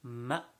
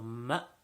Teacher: whenever we join to a hamza, there is a sudden stop sound. So ma. So it's as if the sound, when we're saying it, it stops all of a sudden.